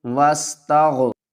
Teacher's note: غین کو موٹا پڑھیں گے